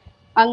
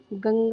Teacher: अनुस्वार की। तो अनुस्वार जब आप उच्चारण करेंगे तो क्या होगा? केवल नाक से जो है आपको इसकी उच्चारण की ध्वनि सुनाई देती है।